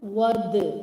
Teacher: dal is the qalqala letter, so wad, we have to make it prominent